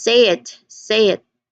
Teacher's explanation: unintentionally you get to incorporate or insert ye sound at some phrases even though they are not there on the spelling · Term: Y insertion